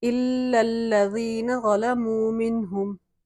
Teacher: دونوں لام پہ تشدید ہے اس لیے ذرا سا جماؤ دے کے پڑھیں گے۔ یا مدہ ہے، یہاں پہ ہم ایک الف کی مقدار کھینچیں گے اس کو۔